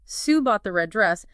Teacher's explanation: Stress red, Sue bought the red dress, implies it wasn't the blue one or the green one she considered.